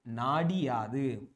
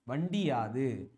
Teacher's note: குற்றிய லிகர எழுத்தா மாறுறப்ப ஒரு மாத்திரையில இருந்து அரை மாத்திரை அளவில் ஒலிக்கிறது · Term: குற்றிய லிகரம்